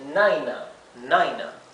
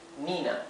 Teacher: la I se debería pronunciar con el sonido largo, I, ¿verdad? O sea, esto debería pronunciarse Naina